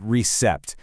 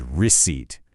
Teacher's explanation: that P is completely silent. It's just not there.